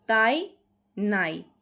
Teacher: নাই এর মধ্যে আ পুরোটা উচ্চারণ হচ্ছে আর ইটা কিন্তু অর্ধ স্বরধ্বনি হিসেবে উচ্চারিত হচ্ছে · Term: দ্বি স্বরধ্বনি